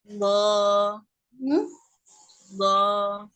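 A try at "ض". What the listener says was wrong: Bukan tengah lidah, sisi lidah Umi. sisi lidah, kalau tengah lidahnya cuma mengikuti aja, yang penting sisi lidahnya nempel ke geraham atas. Geraham ya, ke gigi geraham atas ya.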